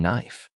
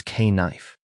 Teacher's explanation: Back in the day, the Germanic speakers actually said the K. It was K-knife.